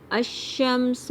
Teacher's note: حمزہ کو شین سے ملائیں گے، شین کو پھیلاؤ سے ادا کریں گے اور دباؤ سے ادا کریں گے